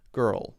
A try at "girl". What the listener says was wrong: Yeah, so I'm hearing gur like we would use gur, G-R-R, sometimes spelled with 3 R's, as a sound.